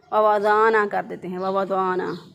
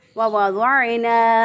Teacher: आइन को अमूमन लोग जो हैं वो हमज़ा से बदल देते हैं, वज़ाना कर देते हैं, वज़ाना, गलत हो जाएगा।